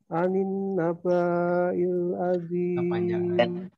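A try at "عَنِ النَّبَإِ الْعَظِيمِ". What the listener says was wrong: Pendek. Anin naba'il pendek.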